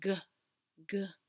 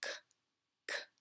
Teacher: If you put your fingers to your throat, you can feel your throat vibrate when you say g, g. But you cannot feel that vibration when you say k, k. But otherwise, you're doing exactly the same thing with your muscles.